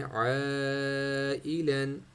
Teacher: عین کو مد ہے جس کو ہم نے کھینچنا ہے